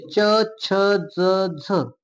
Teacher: दंत प्लस तालु या मुखाच्या भागातून बोललं जातं आणि यांना दंत तालव्य असं नाव दिलेलं आहे